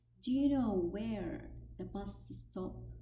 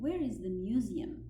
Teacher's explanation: that indirect question has raising intonation. إنه الأسئلة الغير مباشرة has raising intonation فيها ارتفاع في النغمة.